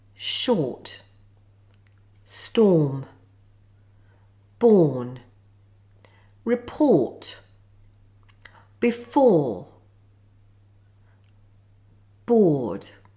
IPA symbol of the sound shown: ɔː